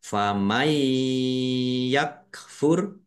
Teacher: Nun sukun bertemu dengan huruf ya, bacaan idgham bi gunnah, masuk dengan mendengung, yaitu mendengung ya, ditandai yaknya ada tasdidnya.